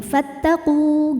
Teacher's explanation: jika berhenti di qu hukumnya Mad Thobi'i karena ada wau sukun didahului harakat dhamah maka panjangin qofnya Kalau berhenti fattaqu gitu tapi jika diteruskan madnya gugur karena ada